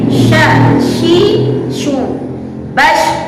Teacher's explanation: Tafashi itu adalah berhamburannya udara di dalam rongga mulut, atau berhamburannya angin di dalam rongga mulut. · Seperti yang pernah dijelaskan sebelum-sebelumnya, istifal dan infitah itu adalah kondisi lidah sejajar berada di bawah, tidak boleh dinaikkan, tidak boleh shin ditebalkan suaranya, karena shin tidak memiliki sifat yang isti'ala, lawan kata daripada istifal.